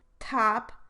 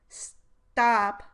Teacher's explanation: top, the aspirated version and in stop, the unaspirated version.